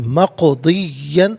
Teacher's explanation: हतमन मक़दिया गलत है, हतमम मक़दियन, और मक़दियन में काफ पर काफ साकिन है, हरफ कलकला है, लेकिन आवाज़ लौटती भी महसूस होनी चाहिए। मक़दियन नहीं, मक़दियन, यहाँ वक़्फ़ करेंगे तो मक़दिया पढ़ेंगे।